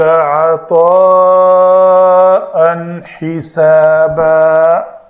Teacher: اس تنوین کے بعد حروف حلقی میں سے ہا تھا تو ہم نے اس کا اظہار کیا۔ الف مدہ کے بعد حمزہ ہے تو مد آئی، الف مدہ کے بعد حمزہ ہے تو مد آئی۔